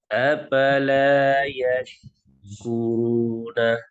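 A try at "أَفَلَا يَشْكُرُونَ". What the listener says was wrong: Apala apa afala? Iya, fa F ya, F. Jangan P ya. Walaupun mungkin kita orang dulu nyebutnya pakai P. Iya, diperbaiki pakai F. Afala, afala. Afala yashkuruna.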